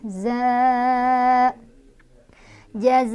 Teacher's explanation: Jazaa'u, dibacanya panjang 4 atau 5 za-nya ya. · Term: mad wajib muttasil